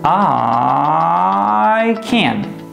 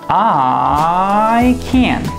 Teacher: your voice goes up, up, up, up, up, and then down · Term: airplane exercise